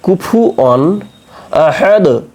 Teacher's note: ওয়াও দুই জবর অন বা অ আলিফ দুই জবর অন, এটা হচ্ছে তানবিন। তানবিনের পরে রয়েছে কি হামজা, তাই না? তাহলে হামজা থাকলে সেটা কি হবে, ইজহারের হরফ, তাই আমরা স্পষ্ট করে পড়ব। কি পড়ব, কুফু অন, তারপরে হামজা জবর আ, হা জবর হা, আহা, দাল দুই পেশ দুন।